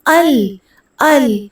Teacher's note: کلکلا نہیں کرنا، آواز لام پہ پلٹے گی نہیں بلکہ ال، ال، حمد میں ہا میں حمد پڑھنا ہے، حمد نہیں پڑھنا، حمد پڑھنا ہے، الحمد پڑھیں گے تو گول ہا ہوگی۔